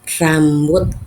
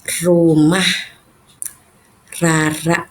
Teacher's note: ujung lidah bertemu dengan langit-langit atau di atas gusi gigi depan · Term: getaran